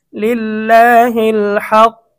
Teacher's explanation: আল্লাহ শব্দের ডানে জের থাকিলে আল্লাহ শব্দের লামকে চিকন করিয়া পড়িতে হয়। এখানে আল্লাহ শব্দের ডানে কিন্তু জের রয়েছে, যার কারণে আমরা লামটাকে চিকন করব।